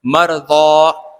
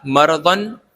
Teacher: تو اس وقف سے پہلے دو زبر والا حرف آ گیا، تو وقف سے پہلے اگر دو زبر والا حرف آ جائے تو اس دو زبر والے حرف کے اوپر سے ہم ایک زبر کو ہٹا دیں گے اور اس کو حرف مدہ کی طرح پڑھیں گے. ویسے تو یہ تنوین ہے، ضاد دو زبر ون، یہ تنوین ہے، لیکن وقف آنے کی وجہ سے ہم اس کو حرف مدہ بنا دیں گے.